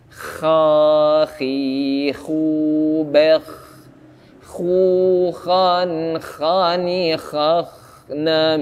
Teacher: Dari tenggorokan atas sambil dinafaskan. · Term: huruf kha